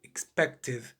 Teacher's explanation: expect, termina en sonido de T. Entonces ahí sí suena id